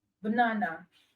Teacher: the first vowel sound in banana is a schwa sound. It's a very weak sound. It's not as strong as the r sound, the o sound, or the u sound.